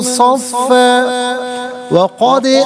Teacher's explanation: ناظرین اسے ملا کر پڑھیں گے تو صفن میں فا پر جو دو زبر کی تنوین ہے اسے واو کے ساتھ ملا کر واو کی آواز کو ادا کیا جائے گا، یرملون کا قاعدہ اپلائی ہوگا۔